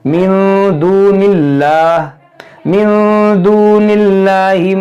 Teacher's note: اس میں جلالت سے پہلے زیر ہے تو اس کو ہم باریک پڑھیں گے